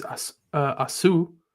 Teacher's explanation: Asu with the reduced first vowel. Chataf patach.